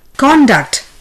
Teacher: The noun would be conduct. The stress is on CON. Here in verb, the stress is on the second syllable, DUCT.